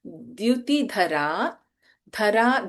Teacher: dha is Mahaprana, but in Dyuti, da is Alpaprana.